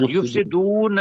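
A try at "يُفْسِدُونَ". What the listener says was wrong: یفسدون ابھی نہ کہیں. جب وقف آئے گا تو یفسدون آئے گا، ورنہ نون کے اوپر زبر کا زبر کو ظاہر کرنا یہی چیز ہے کہ ہمیشہ نون کے اوپر زبر آئے گی.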